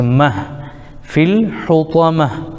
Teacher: یہ گول تا کی اصل بدل جاتی ہے وقف کی صورت میں تو یہ ہائے ساکن بن جائے گی